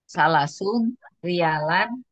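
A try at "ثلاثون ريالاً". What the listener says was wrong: Pakai nunnya pakai. Salasuna riyalan.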